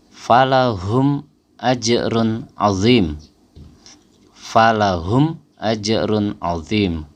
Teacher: jadi kita membacanya jelas enggak ada dengung sama sekali membacanya enggak boleh di putus ya Nggak boleh AJ ada jeda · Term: Izhar Syafawi, izhar syafawi